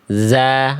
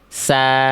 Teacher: Zai itu dia tertahan nafasnya. Sin itu dia mengalir nafasnya.